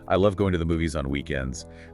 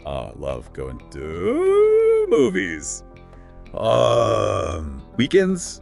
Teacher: They highlight that the stressed words are love, movies, and weekends. The important words, the content words.